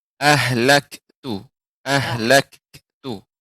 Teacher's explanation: kaf yang sukun ini hamas bukan memantul.